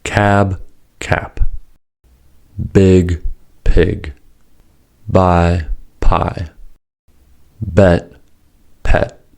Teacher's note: due to prefortis clipping, vowels are shorter before voiceless consonants.